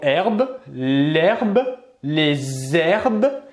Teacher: un h muet qui n'a donc aucun effet sur la prononciation et qui va nous permettre donc de faire des liaisons ou bien l'élision avec l'article